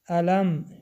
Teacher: میم با سکون در اینجا هم اظهار شفوی حرف میم روشن خوانده می شود